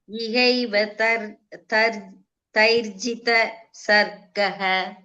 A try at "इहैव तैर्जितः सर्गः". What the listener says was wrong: Taijita sargaha. There one visarga is there, Bhagini. So taijita sargaha.